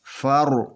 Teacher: کیونکہ یہ را سے پہلے زبر ہے تو اس کو پر پڑھا جائے گا، را موٹا پڑھا جائے گا